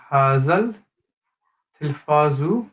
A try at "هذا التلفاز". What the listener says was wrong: The dal in hada, try to avoid making it sound like a Z. And the second thing, al-bab, yes, is where it says at-tilfazu, the ta is a sun letter.